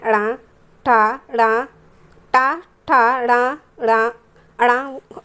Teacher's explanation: यह मूर्धा ध्वनि से उच्चारित किए जाते हैं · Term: टा वर्ग